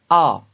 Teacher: A, on la prononce avec une bouche grande ouverte, donc c'est une voyelle ouverte.